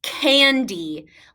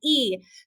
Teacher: a consonant in our second syllable it has the d and the y is saying e it has that long vowel sound e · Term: long e sound